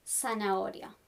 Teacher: in Latin American Spanish, we don't do the th. So this sounds like s, zanahoria.